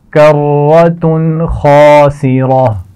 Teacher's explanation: تنوین کے بعد حرف خا آ گیا ہے، تو یہاں غنہ نہیں کیا جائے گا